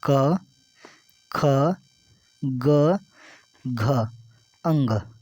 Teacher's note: क ख ग घ अंग ये प्यारे दोस्त ये जितने भी ये हैं ये सब कंठ से बोले जाते हैं